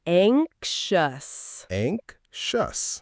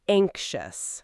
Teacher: Notice that the X sounds a bit like a KS followed by a sh sound.